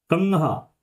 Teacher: तो इस तरह से जो अंकी बिंदी लगती है इसको ही हम अनुस्वार कहते हैं, और इसकी नासिक की ध्वनि होती है कंघा। आप देखोगे कंघा बोलते हुए जो अंकी बिंदी की आवाज है, अनुस्वार की आवाज है, वो आपकी नाक से आती है।